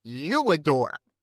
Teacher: if it was you and not I, we'd put a W glide in, you adore. Now, there's no W in you adore, but we slip that in to bridge it, to make it go faster.